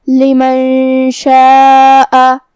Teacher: شین حروف الاخفاء میں سے ہے اور اخفاء کا معنی ہے چھپا دینا، تو ہم نون ساکن کو چھپاتے ہوئے اور غنہ کے ساتھ یہ حکم کو ادا کریں گے